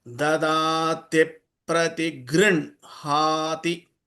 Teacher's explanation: many people recite incorrectly as grihanati. It is not grihanati, it is grinhati. In has to come first.